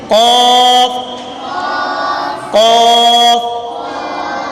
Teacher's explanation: قاف کا مخرج زبان کی جڑ اور تالو کے نرم حصے سے ادا ہوتا ہے، زبان کی جڑ اور تالو کے نرم حصے سے قاف ادا ہوتا ہے۔